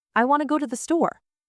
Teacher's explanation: The words want, go, and store were strong. The other words were tiny.